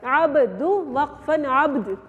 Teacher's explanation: دال کے اوپر وقف کے بعد دیکھیے چھوٹا سا جزم آ گیا نا، جب ہم اس کو وقف کریں گے تو اس کے اوپر جزم آ جائے گا، عبد وقفن عبد. دال کے اوپر بھی قلقلہ اور با کے اوپر بھی قلقلہ، یہ ایک ہی لفظ میں دو قلقلے ہو گئے